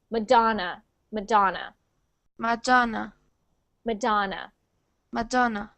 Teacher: Yes, so when we say that word in English, we pronounce it with an ah, so Madonna, and we pronounce the da as the big syllable. So we say that part the loudest.